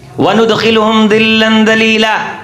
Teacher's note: ذال کے ساتھ پڑھیں گے، دونوں دانتوں کو کھول کے درمیان میں زبان رکھ کے